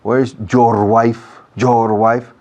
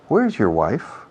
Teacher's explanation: Your es la palabra menos acentuada en toda la frase. Sin embargo, los españoles tenéis la costumbre, la mala costumbre, de acentuar esa palabra.